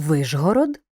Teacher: у Вижгород ш вимовляємо як ж